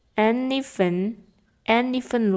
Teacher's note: n-nya and d-nya ini dihilangkan atau tidak dibaca kalau teman-teman menggabungkan antara and dan even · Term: connected reading